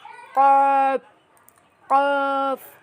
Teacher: কপের উচ্চারণটা হবে জিহ্বার গোড়ার উপরের তালুর সাথে লাগিয়ে মোটা করে পড়তে হবে এভাবে কফ। ঠিক এভাবে করে চেষ্টা করবেন তাহলেই হবে।